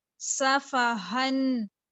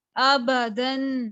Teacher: ہا جو ہے اس کو ادنا خلق سے نکالیں گے، ابدن باریک ہے.